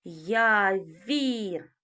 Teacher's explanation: Звук в м'який, приголосний.